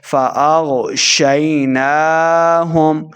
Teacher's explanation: نون کے اوپر کھڑی زبر ہے اس کو 2 حرکات لمبا کر کے پڑھیں گے